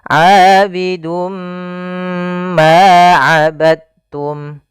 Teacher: kita masukkan tanwinnya kepada huruf mim, kemudian ditahan. Abidum ma, tahan ma, baru dilepas. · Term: idgham bi gunnah